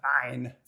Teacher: ayn, which you make by constricting your throat while voicing the letter